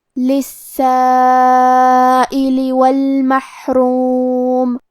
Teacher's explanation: کلمت المحروم میں یہاں حرف الحا ہے لہذا ہم یہ حرف کو ظاہر کریں گے. کیونکہ را پہ پیش ہے تو یہاں را کا حکم ہے تفخیم. ہمیں حرف الرا کو موٹی آواز میں پڑھنا ہے